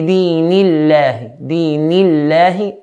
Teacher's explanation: the letter that comes before the word Allah, noon, has a kasra, so we pronounce the lam lightly.